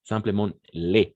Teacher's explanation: Mais on ne va pas prononcer le S à la fin.